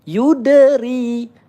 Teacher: ada huruf qalqalah sugro, kita berikan pantulan ya. Yudri 1 ayunan atau 2 harokat mat asli ri.